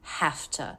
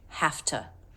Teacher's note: because T is unvoiced therefore we make the V unvoiced which is f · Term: F sound